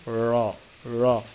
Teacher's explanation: জিহ্বার আগার ফিট তার বরাবর উপরে তালুর সঙ্গে লাগাইয়া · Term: মোটা র